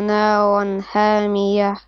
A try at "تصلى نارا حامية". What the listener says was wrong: Now make your ha. You see, you have to make your ha more clear. I can hear the same ha and ha for both of your letters. It's not correct.